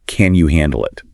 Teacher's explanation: A straightforward falling tone is just a direct question of capability.